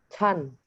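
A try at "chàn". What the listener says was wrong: Masih ada angin, masih ada H-nya. Chan. Chan. Ya, nada 4. Nada 5, pendek ringan.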